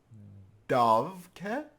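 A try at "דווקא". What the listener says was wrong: The zwei vovin are actually pronounced as a f in this case because it's followed by an unvocalized consonant. It's dafke, which means precisely.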